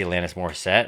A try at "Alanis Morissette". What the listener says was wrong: You put a lot of emphasis on it.